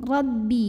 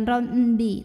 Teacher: tekanannya di bibir jangan sampai ada suara masuk hidung